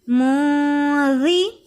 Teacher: نون ساکن کی آواز کو ناک میں چھپا کر پڑھیں گے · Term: اخفا